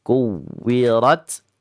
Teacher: Bagi bacaan waw ini jangan terlalu panjang ya, karena ini waw asli tasdid. Bukan karena sebab idgham bi gunnah.